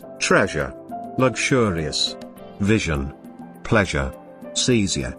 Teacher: a voiced palato alveolar fricative sound it is voiced because of the vibration of the vocal cords · it is voiced because of the vibration of the vocal cords in the course of its articulation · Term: the genre sound